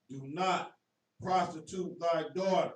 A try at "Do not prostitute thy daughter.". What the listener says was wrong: Read that one more time, nice and clear. It sounds like you're saying prosecute. Do not prostitute thy daughter.